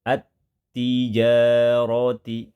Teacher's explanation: cara pembacaan lamnya dibaca dengan cara dimasukkan, dileburkan ke huruf depan, ke huruf yang ada di depannya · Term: alif lam syamsiyah